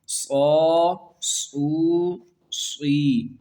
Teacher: واو یہاں پر ہونٹوں کو گول کرنا ہے، او کی آواز نہیں نکالنا۔ صاد زیر یا صی، صا سو صی۔